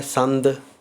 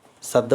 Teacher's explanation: ਟਿੱਪੀ ਦੀ ਆਵਾਜ਼ ਵੀ ਨ ਦੇ ਵਿੱਚੋਂ ਨਾਸਕੀ ਹੀ ਆਉਂਦੀ ਹੈ।